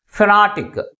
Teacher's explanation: Second syllable is pronounced with a greater force comparing with other syllables. And also this word ends with IC suffix. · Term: primary stress